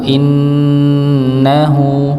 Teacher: ada huruf nun yang bertasydid seperti yang kita pernah sampaikan, maka dia didengungkan, ditahan terlebih dahulu.